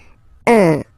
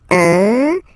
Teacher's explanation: Of course, after that you will master it without any problem and without any doubt, but you've got to pronounce it like un. So it's what we call the nasal, so it goes in your nose, okay? So if you listen to me, you don't hear any N, okay?